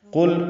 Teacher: قاف پر لام ساکن پہ اظہار ہے، لام باریک پڑھا جائے گا۔